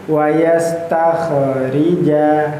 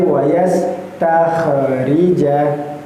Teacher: Maka wayas tertahan. Jangan sampai wayas takhrija, jangan sampai terpantulkan.